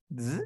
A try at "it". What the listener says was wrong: No, esto es una D y esto es una I mayúscula. ¿Te acuerdas cómo se pronunciaba la I mayúscula? It, it.